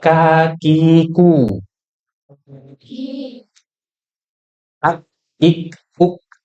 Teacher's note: asal bunyi huruf kaf dari pangkal lidah. Pangkal lidah bertemu dengan langit-langit yang lunak. Di bagian dalam nih kan langit-langitnya lunak nih.